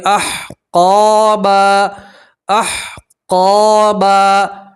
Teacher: آپ 2 زبر کی تنوین کے اوپر وقف کریں گے تو 2 زبر کی تنوین کو ایک الف اور ایک زبر سے پڑھیں گے